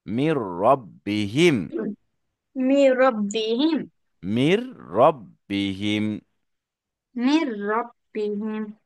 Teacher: এটাকে বলা হয় ইদগামে বেলা গুন্না, মানে ইদগাম হবে মিলবে, কানেক্টেড হবে, নট ফর গুন্না, গুন্না ছাড়া।